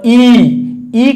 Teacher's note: तो देखिए अ जो होता है वो कंठ से बोला जाएगा, और ई करेंगे तो तालु से आवाज निकलेगी, ठीक है, तालव्य, यानी तालु से · तालु से ए बोला जाता है